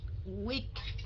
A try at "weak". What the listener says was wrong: Weak, không có âm S.